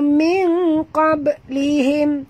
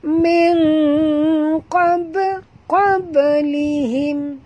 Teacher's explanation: Ba sini mati di tengah-tengah kalimah. Kita kena lantunkan dia dengan lantunan kecil.